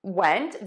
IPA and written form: wɛnt (went)